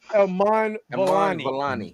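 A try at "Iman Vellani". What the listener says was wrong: No, it's okay if you get a vowel wrong, but you were just adding consonants where they don't deserve to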